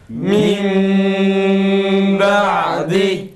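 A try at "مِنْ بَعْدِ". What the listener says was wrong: Ağzını aç yalnız. Ağzını açmadan söylenmez. Mim ba'di.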